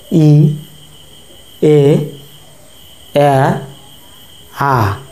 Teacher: অর্থাৎ লম্বা হয়ে যাচ্ছে বা দুপাশে ছড়িয়ে পড়ছে ই এ আ যখন আ বলছি তখন আমাদের ঠোঁট পুরোপুরি প্রসারিত হয়ে যাচ্ছে সেজন্য ই এ আ এই চারটি হচ্ছে প্রসারিত বা প্রশৃত স্বরধ্বনি · কীভাবে আমরা যদি উচ্চারণ করি তাহলে দেখতে পাবো ই, এ, আ, এভাবে কি হচ্ছে, ধীরে ধীরে আমাদের ঠোঁট প্রসারিত হচ্ছে, অর্থাৎ লম্বা হয়ে যাচ্ছে বা দুপাশে ছড়িয়ে পড়ছে। ই, এ, আ, যখন আ বলছি তখন আমাদের ঠোঁট পুরোপুরি প্রসারিত হয়ে যাচ্ছে। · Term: প্রসারিত স্বরধ্বনি, প্রসারিত বা প্রসৃত স্বরধ্বনি